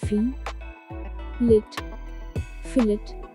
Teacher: stress is on fee